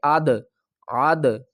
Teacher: عین کو دال سے ملائیں گے اور دال کے اوپر قلقلہ کریں گے